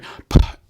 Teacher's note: If I say p into my microphone that I have up here for the video recording, you're going to hear an overwhelming force of air. That's called a plosive.